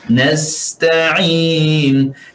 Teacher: pastikan sin di sini ada angin, sifatul hams